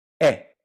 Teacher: that eh is how we say e in Portuguese